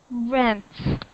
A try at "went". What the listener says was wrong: Not vent. Keep your teeth away. Went.